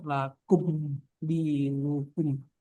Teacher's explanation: Tetap ada dengungnya tapi sedikit ya. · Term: mim sukun